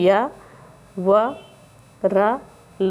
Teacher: या का उच्चारण स्थान तालव्य, वा का दंतोष्ठ और रा का वर्ष और ला का भी वर्ष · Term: अंतस्थ व्यंजन